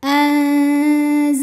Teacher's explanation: Cara membaca nun sukun ini adalah samar-samar. Siap-siap menuju makhraj huruf zai disertai bunyi dengung. Samar dan dengungannya sama karena zai ini makhrajnya tidak terlalu dekat dan tidak terlalu jauh dari nun. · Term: ikhfa awsat